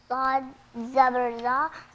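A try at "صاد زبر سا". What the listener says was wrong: زا نہیں، سا.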